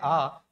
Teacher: केवल एकमात्र स्वर है आ जिसके उच्चारण में 100% मुख आपको खोलना पड़ता है और यह कहलाता है विवृत। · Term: विवृत स्वर